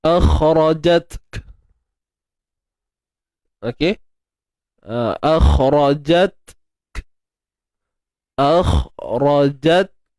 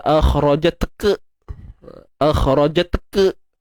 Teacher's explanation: So point dia, ta tu dah hams. Kaf tu pun nak dihamskan.